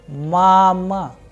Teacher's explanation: the sound of first vowel a is higher, whereas the sound of second a is lower